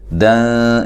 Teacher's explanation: یہاں نون تنوین کا اخفا مع الغنہ ہے، باریک اخفا ہے